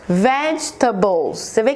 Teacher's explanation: a primeira sílaba é mais forte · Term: sílaba tônica